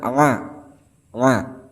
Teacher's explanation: makhraj huruf dari pada Ain ini terletak di bagian tengah-tengah tenggorokan